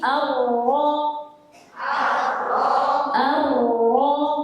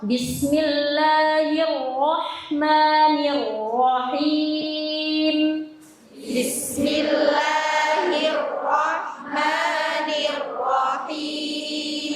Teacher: pengucapan huruf ro itu getarannya tidak boleh terlalu banyak. Jadi getarannya ringan saja.